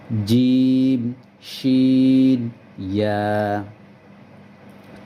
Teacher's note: জিহ্বার মধ্যখান তার বরাবর উপরের তালুর সাথে লাগিয়ে শক্ত করে উচ্চারিত হয়।